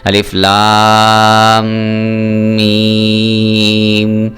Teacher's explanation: اب یہ دیکھیں یہاں پہ شد آ گئی، سکون اصلی آ گیا، تو آپ نے کیا کرنا ہے، لام کو میم کے ساتھ بھی ملانا ہے، لام پہ بھی مد ہے اور میم پہ بھی مد ہے، آپ نے دونوں کو لمبا کر کے پڑھنا ہے۔